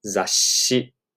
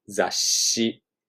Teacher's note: You kind of have to hold the sh a little long.